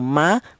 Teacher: Begitu kita bilang ma huruf mim, kedua bibir kita rapat dulu.